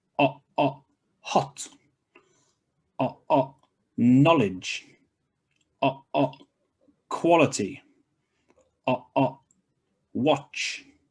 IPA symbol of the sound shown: ɒ